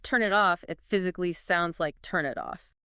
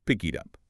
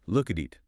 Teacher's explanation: The K sound goes to the I. The T sound goes to the U. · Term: linking